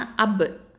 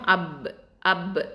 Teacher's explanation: உதட்டோட ஈரமான பகுதியிலேருந்து உச்சரிக்கக்கூடிய எழுத்தாக இருக்குது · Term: உதட எழுத்து